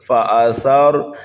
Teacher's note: قواعد بالکل آسان ہے، فا کے اوپر زبر ہے، متحرک ہے، جلدی پڑھیں گے، حمزہ بھی متحرک ہے، جلدی پڑھیں گے، سا کو نرمی کے ساتھ پڑھیں گے، سا کے بعد میں را ساکن ہے، اس لیے سا کو ہم را میں ملا دیں گے اور را کو پر پڑھیں گے، اس لیے کہ را ساکن سے پہلے زبریہ پیش ہو تو را کو پر پڑھا جاتا ہے۔